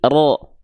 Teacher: ketika dia dibaca dengan keadaan yang tebal maka bunyi vokalnya bukan vokal A tapi vokalnya vokal O oke kita tulis O berarti dia dibaca terdengar seperti vokal O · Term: huruf yang tebal